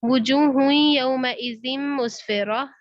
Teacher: दो दम्मा का या में इदगाम हो रहा है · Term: इदगाम माल गुन्ना